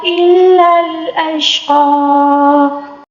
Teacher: اب وقف کے دوران زبر کو ہم کھڑا زبر دے کر پڑھیں گے